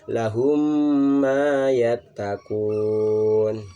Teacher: Jadi walaupun di ayat tersebut tidak ada tasdid ataupun ada, itu dibacanya dengung ya. Mim bertemu dengan mim harus dibaca dengung. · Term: idgham misli